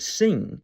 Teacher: But what if you try to stop the air further back in your throat, with the back of your tongue, instead of the front of it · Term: N with descender